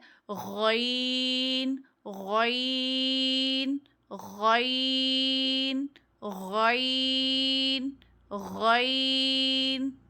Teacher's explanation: حلق کا وہ حصہ جو منہ سے قریب تر ہے، ادنائے حلق سے غین ادا ہوتا ہے. سب سے اوپر والا حلق کا حصہ ادنائے حلق ہے، وہاں سے غین ادا ہو رہا ہے.